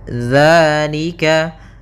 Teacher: bahas palika di sini ada hukum tajwid berupa Mad thii yaitu adanya fathah bertemu dengan alif maka kita panjangkan dua harakat